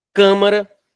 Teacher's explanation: a sílaba tônica é a antepenúltima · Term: proparoxítono